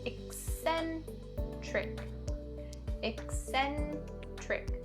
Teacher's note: For this word, it spells with 2 letter C's, but they're both pronounced quite differently. The first one is the k sound, and the second C is pronounced with the s sound. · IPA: /ɪk-ˈsen-trɪk/